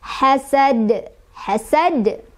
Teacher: Dalnya awalnya fathah, karena berhenti jadi sukun, maka dia dibaca qalqalah kubro atau dibaca pantulannya besar